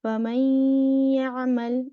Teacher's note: you merge, you make the ya with the shadda, like you're reading the second letter with the shadda for the idgham. But you have to make gunna.